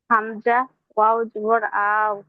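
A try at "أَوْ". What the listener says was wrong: আও টানছেন কেন আউট তো টান হবে না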